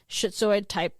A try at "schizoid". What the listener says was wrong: Do you mean schizoid? Okay, because it sounded like shitoid, and I was like... But okay, so schizoid, you said?